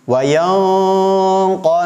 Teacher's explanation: Karena qaf itu lebih dalam makhrajnya. Maka cara mengucapkannya pun lebih dengung daripada huruf kaf.